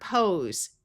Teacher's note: It's a verb and the s has the z sound.